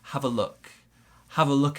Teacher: we've got some linking between the v and the uh sound so have a look have a look at something also we've